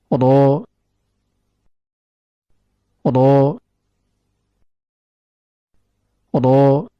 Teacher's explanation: Makhraj huruf ro terletak pada pertemuan antara ujung lidah dengan gusi bagian atas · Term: huruf ra